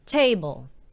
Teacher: you stress the first syllable